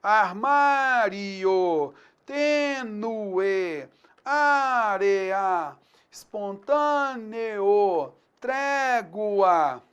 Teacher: você vai ter a antepenúltima sílaba tônica, o entendimento de que há aí uma proparoxítona.